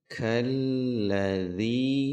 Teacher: Alif lam syamsiyah hanya dihentakkan saja, tasydidnya jangan sampai ditahan